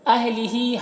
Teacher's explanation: ہا کے نیچے کھڑا زیر ہے جو یا مدہ کی طرح ہے، اسے ایک الف کے برابر کھینچیں گے